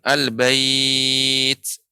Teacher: ini namanya madlin. Dibaca boleh 2, ya, atau 4 atau 6 harokat